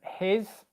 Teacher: it's written as an s in the word but it's pronounced as a zed